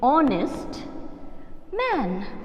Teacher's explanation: the sound H is silent here, okay? And we are beginning with O.